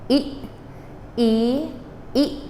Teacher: the E is cut off with, in phonetics, they call it a glottal stop, the back of your throat. E, E, E. So, ati, ati, ati.